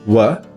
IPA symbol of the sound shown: wə